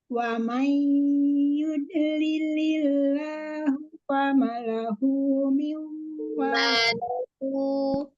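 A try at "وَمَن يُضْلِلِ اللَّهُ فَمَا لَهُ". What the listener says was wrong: Ma-nya panjang.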